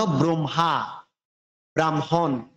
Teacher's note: হ যোগ ম হয় ম হলেও আমরা উচ্চারণ করার সময় হটা পরে করব